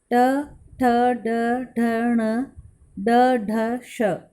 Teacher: मूर्धन्य, तालु के मूर्धा भाग से निकलने वाले व्यंजन हैं